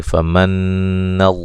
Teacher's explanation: नून मुशद्दद पे गुन्ना ज़रूरी है, लफ्ज़ अल्लाह को खूब मोटा अदा करेंगे